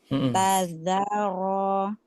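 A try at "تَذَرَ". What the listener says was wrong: Tadzaro. Za. Keluarkan lagi suaranya. Didorong suaranya ya. Jangan sampai tertelan.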